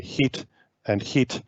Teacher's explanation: in hong kong english these vowels might both be realized as it so we might hear hit and hit as very similar